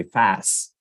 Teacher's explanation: one might say fast and not say the T in the end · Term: cluster